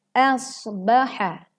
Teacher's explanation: tekan huruf shad dengan suara yang tebal